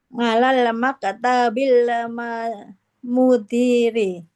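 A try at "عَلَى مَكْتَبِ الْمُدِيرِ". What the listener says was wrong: di kata maktab ada alnya tidak Ibu? Ala maktabi.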